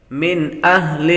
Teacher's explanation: کفروا من اہل الکتاب من اہل نون ساکن کے بعد حمزہ حروف حلقی میں سے آ رہا ہے، اظہار کا قاعدہ لگے گا، غنہ نہیں کریں گے۔